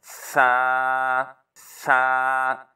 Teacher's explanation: ऊपर वाले दांत, उसका किनारा और ज़ुबान की नोक, थोड़ी सी ज़ुबान को बाहर निकाल के फिर पढ़ेंगे नरमी के साथ